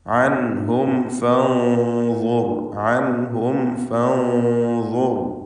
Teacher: സാക്കിനത്തെ മീമിന് ശേഷം ഫ ആണ് വന്നത് എന്നതുകൊണ്ട് സൂക്ഷ്മതയോടെ ഇൽഹാർ ചെയ്യണം. ഫ ഷഫവിയ അക്ഷരമാണ്, മീമും ഷഫവിയ അക്ഷരമാണ്. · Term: ഇൽഹാർ ഷഫവി